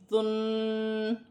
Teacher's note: ذال نرمی والا حرف ہے، نرمی سے ادا کیا جائے گا، سٹی نہ ہو